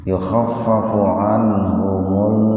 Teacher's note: Mimnya asalnya itu sukun, itu anhum, tapi karena setelah mimnya itu mati, lamnya kan mati, maka mimnya diaktifkan dengan doma jadi mul gitu · Nah ini sama nih, nun mati ketemu dengan ini, maaf ini idhar khalqi, nun mati ketemu ha, tapi idhar khalqinya dibaca sepintas saja karena nun mati ketemu hanya dalam satu kata